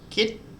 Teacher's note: and a short vowel so if we go across to here low-class initial consonant dead syllable and a short vowel that gives us a higher tone